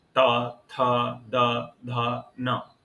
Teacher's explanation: आगे त वर्ग का उच्चारण स्थान है दंत, क्योंकि त वर्ग का उच्चारण करते हुए हमारी जिह्वा का अग्रभाग दंत से टकराता है।